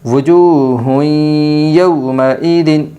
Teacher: 2 پیش تنوین کے بعد یومن کے 4 حرفوں میں سے یا آئی ہے، اس لیے 2 پیش تنوین کو غنہ کے ساتھ ملا کر پڑھے گی۔ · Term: ادغام مع الغنہ